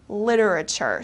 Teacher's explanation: in the United States we especially pronounce this t very softly the T becomes very soft · it kind of becomes soft T, almost a D sound